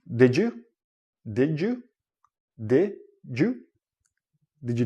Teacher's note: when you connecting words and you have a D and a y together it becomes like a J sound